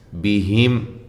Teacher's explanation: ہا کو واضح نکالنا ہے، میم ساکن کا اظہار ہے